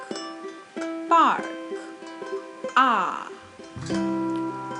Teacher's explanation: It's a long ah sound, and the sound is same as in father or park.